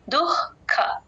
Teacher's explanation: క ముందు ఎప్పుడు విసర్గ వచ్చినా హెచ్ సౌండ్ హెచ్ సౌండ్ లాగా చెప్తాము